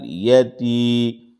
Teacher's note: یا مدہ کا قاعدہ ہو رہا ہے، یہاں پر مد اصلی ہے، اس لیے 2 حرکت کے برابر اس کو کھینچیں گے